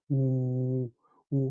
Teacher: 혀가 저 뒤로 약간 좀 넘어갈 듯이 밑으로 아예 내린다는 느낌으로 오를 해요. 오, 오 한 다음에 입 공간만이에요.